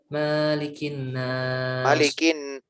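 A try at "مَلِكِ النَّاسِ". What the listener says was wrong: Malikin pendek ya. Malikin sama gundahnya juga. Malikin nas.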